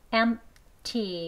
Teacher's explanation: M을 강하게 높게 길게 발음해 주시고 T는 낮게 약하게 합니다. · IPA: /ˈemp.ti/